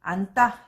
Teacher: 니은으로 끝나고 뒤에 예사 소리가 왔는데 이게 된소리로 바뀌어요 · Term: 된소리 되기